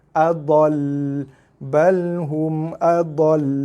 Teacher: Waqaf pada huruf selain nun dan mim yang bersabdu, tak ada dengung tapi kena tekan pada makhraj tu dengan kadar panjang sikit. 2 harakat lah lebih kurang.